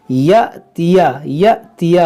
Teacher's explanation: حمزہ ساکنہ ہے تو اس کو جھٹکا دے کر پڑھیں گے